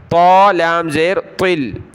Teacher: طا بڑی طا ہے، کلرفل، موٹا کریں گے اس کو